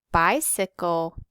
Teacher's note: we're going to underline our unstressed syllables cy and CLE